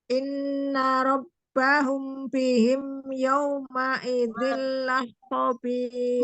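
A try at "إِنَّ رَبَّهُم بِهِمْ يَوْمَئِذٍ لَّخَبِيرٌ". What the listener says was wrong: Malah hilang itu ikhfa safawinya, mim sukun ketemu dengan baknya. Ya, kurang gunanya. Rabbahum bihim. La khabir. Janganlah khabir. Pokoknya tidak ditahan. Yauma idzil la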